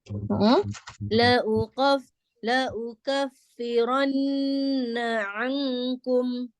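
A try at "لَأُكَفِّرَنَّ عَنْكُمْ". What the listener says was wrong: Dibuka lagi mulutnya di kaf, huruf kaf ya biar tidak tebal. La uka gitu ya. La ukaffiranna. Nah, ini bunyinya NG ya. Jadi seperti mengucapkan kata yang bunyinya ng-nya ya, yang, ang gitu ya, angkum. Jadi bunyinya ng.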